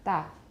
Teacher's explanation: The voicing starts very shortly after the closure, the VOT being less than 20 milliseconds. Milliseconds, making this an unaspirated stop.